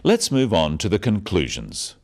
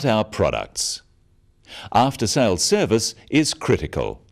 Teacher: note the downward intonation at the end of sentences